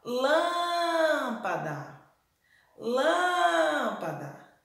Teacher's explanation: lã é a sílaba mais forte da palavra lâmpada